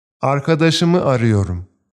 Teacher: In the below example, the verb ara loses its a sound and it's replaced with an ı sound